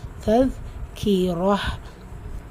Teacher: உங்களுடைய மேற்பல் வரிசையுடைய கீழ் ஓரங்கள்ல உங்களுடைய நுனி நாக்கு உரசி சொல்லணும் · ரா ஃபத்ஹா பிச்சு வந்திருக்கு, வல்லினமாக உச்சரிக்கணும். வசனத்துடைய முடிவில் தா மர்பூத்தா வந்திருக்கு, ஹா சாக்கினா மாற்றி ஓதணும். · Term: தால், ஜால்